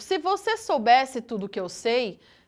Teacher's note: percebam a repetição, pessoal, desse som sibilante do S. Isso constitui uma aliteração.